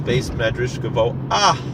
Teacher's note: And I don't know if you can hear it on the recording to clarity, but there is a slight pronunciation of the hey at the end of the word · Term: mapik hey